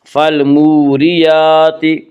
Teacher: یہاں را کے نیچے زیر ہے اس لیے را کو باریک پڑھیں گے